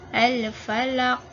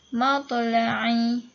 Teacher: Bila berhenti, dia adalah kuat ataupun adalah qalqalah kubra.